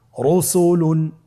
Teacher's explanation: র উপরে পেশে তাহলে র হরফটিকে মোটা করে পড়তে হবে